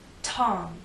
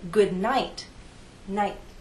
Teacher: You can feel the puff of air in T. Tom. But when I say good night, night, I don't really feel much air there. The tip of my tongue touches that hard bump.